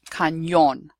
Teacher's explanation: the letter ñ is pronounced as if there is a y after it